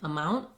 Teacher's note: I go up to mark the T and I don't let it out. So when a word ends with T, we often use a stopped T sound. · Other times I've been saying amount where I use what's called a stopped T there. And basically you don't really hear that T sound.